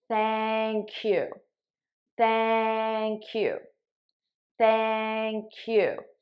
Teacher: I transfer the sound to the next word and I say thank you because now I'm able to say it as one word.